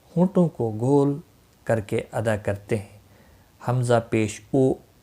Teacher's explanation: اور پیش ہونٹوں کو گول کر کے ادا کرتے ہیں، حمزہ پیش او، یعنی جس وقت پیش والا حرف آپ نے ادا کرنا ہوگا تو ہونٹ گولائی اختیار کر لیتے ہیں